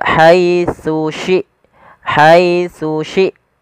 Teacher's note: huruf tsa yang pertama Ujung lidah kita menempelkan dengan gigi di atas kemudian syin dari tengah lidah kita